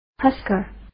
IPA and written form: ˈhʌskə (Husker)